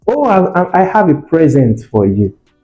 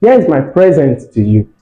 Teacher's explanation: for present, the stress is on the first syllable.